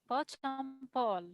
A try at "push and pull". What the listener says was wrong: It's not push and pull. In reduction, I told you last sessions, push and N. This is reduction in American accent, N. We don't say and. And is correct in standard English, but we can say N.